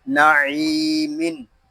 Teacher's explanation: نون زبر نا، عین یا زیر عی، نعی، میم دو زیر من، نعیمن، یہاں عین کو ہم ایک الف تک کھینچ کر پڑھیں گے کیونکہ یہاں یا مدہ ہو رہا ہے